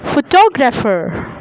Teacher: The middle part is stressed.